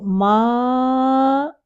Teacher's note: زبان ہماری کہاں ہے؟ بالکل نیچے ٹھہری ہوئی ہے اپنی جگہ پہ، نون کے لیے اوپر اٹھ کے اوپر کو ٹچ نہیں کرتی تالو کو۔ اگر ہم نون کو ساکن کریں ان، تو زبان کی ٹپ اوپر جاتی ہے، لیکن جب ہم بولتے ہیں ماں تو اس میں لاسٹ میں جو نون آ رہا ہے اس کے لیے ہماری زبان کی ٹپ اوپر نہیں ٹچ ہوگی بلکہ نیچے ہی رہتی ہے۔